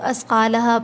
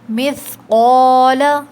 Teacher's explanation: قوف heavy letter ہے، اس کو موٹا پڑھتے ہیں